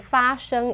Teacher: like two first tones